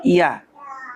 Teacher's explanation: ইয়া জিব্বার মাঝখান তার বরাবর উপরে তালুর সঙ্গে লাগাইয়া নরম করে পড়তে হয়